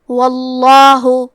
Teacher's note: کلمت واللہ یہاں حرف الواو پہ زبر ہے تو ہم لفظ الجلالہ کے لام کو تفخیم سے مطلب موٹی آواز میں پڑھیں گے